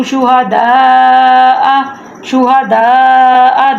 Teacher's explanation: دال کے آگے مد ہے تو اس لیے ہم نے دال کو لمبا کرنا ہے